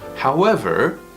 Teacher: when we say however in English, we do use tone 4.